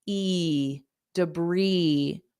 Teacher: so here syllable stress is important d da debris debris Bri so there's no s on it at all and the vowel sound is e not i e debris briis and the first sound is unstressed so it's